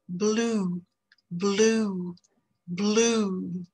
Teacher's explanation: c'est une voyelle qui est postérieur qui est fermé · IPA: /uː/